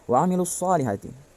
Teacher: As-salihati sama as-syamsiyah. Cara bacanya memasukkan bunyi al ke huruf selanjutnya, artinya seakan-akan al ini tidak ada. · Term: al-syamsiyah